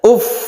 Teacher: Uf karena ini ada bertasydid maka suara fa-nya itu harus kelihatan ya. Uf ketika berhenti ya.